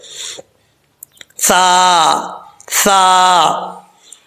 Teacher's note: اس کا مخرج ہے زبان کا سیرا اوپر والے دانتوں کے اندرونی کنارے سے لگے تو سا پڑھا جاتا ہے، سا، سا۔ اب آپ نے اس طریقے سے پڑھنا ہے کہ سا میں سیٹی نہیں آنی چاہیے۔